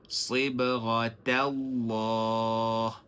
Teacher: lafzun jalalah itu dibacakan tebal, tapi jangan pengaruhi huruf ta. Jangan baca Sibghatallah, tapi baca Sibghatallah.